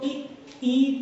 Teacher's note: ई तो तालु हो जाएगा, क्योंकि तालु में जीभ बढ़ जाती है